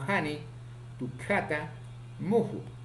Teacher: Consonante ja, fricativo, velar, sordo, ocurre en posición inicial, medial y final